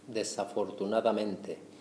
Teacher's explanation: We've got the stress on that penultimate E.